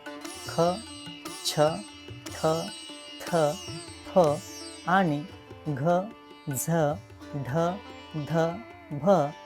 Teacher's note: हकाराची छटा असते श्वास बाहेर जोरात येतो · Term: महाप्राण